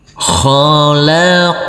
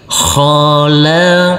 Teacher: Huruf qaf yang bersukun ini harus kita pantulkan karena ini adalah bacaan qalqalah.